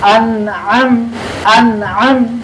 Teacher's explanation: Hamzah itu di awal di pangkal tenggorokan Ain di tengah di Pangkal dulu baru naik ke atas Anam Anam Nah itu